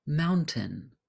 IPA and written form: ˈmaʊntɪn (MOUNTAIN)